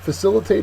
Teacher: it's a verb second syllable is accented